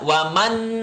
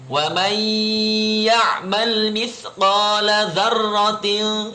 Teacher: Wa may gak boleh dibaca waman, gak boleh. Harus dimasukkan ke huruf ya atau huruf idghamnya dan dilamain. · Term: dengung